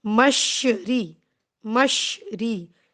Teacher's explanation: را جو ہے وہ باریک پڑھا جائے گا، کیوں؟ کیونکہ اس کے نیچے زیر ہے، کسرہ ہے۔